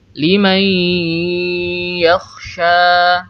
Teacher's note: Kita harus memanjangkan gunnah dengan ukuran kurang lebih 2 ketukan.